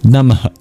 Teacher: And then finally at the end of Namah, there's these two dots, or the H with a dot under it, known as the Visarga. It's a mini exhale.